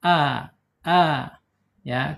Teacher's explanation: alifnya secara makhraj ada di tenggorokan yang paling bawah. A ya.